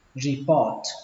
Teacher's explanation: Âm O ở đây các bạn hơi kéo dài nó ra một chút. Report. Và kết thúc bằng âm T.